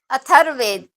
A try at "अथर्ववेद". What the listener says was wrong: अथर्व, ये व जो क्लियर नहीं आ रहा इसीलिए पूछ रहा हूं बार बार मैं। अथर ऐसा लगता है अथर्ववेद हो रहा है, ये अथर्ववेद नहीं है, ये अथर्व। हाँ, इसलिए ये वाली जो स्पष्ट नहीं होगा नंबर कट जाएंगे, सुन लो।